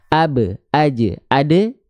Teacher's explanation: bunyi vokalnya condong kepada e berarti dia huruf tipis karena pangkalidnya enggak naik bunyi vokalnya e e AB